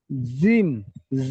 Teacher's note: জিবের মাঝখানটা উপরের তালুর সঙ্গে চাপুন